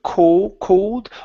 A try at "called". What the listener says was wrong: Open up your mouth more with an ah, called.